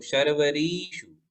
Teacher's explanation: ये शर्वरीषु में री दीर्घ है तो इसको दीर्घ पढ़ेंगे। शर्वरीषु और शर्वरीषु देखो अंतर पड़ता है ह्रस्व और दीर्घ मात्रा में।